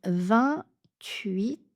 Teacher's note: U et I fondu ensemble